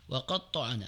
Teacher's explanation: ada tekanan di huruf ta yang bertasdid